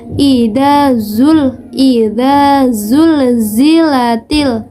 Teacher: ketika kita mengucapkan huruf dza Nah itu ada tambahan suara yang keluar dari kedua bibir kita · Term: sofir